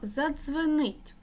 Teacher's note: ДЗ один звук африкат твердий приголосний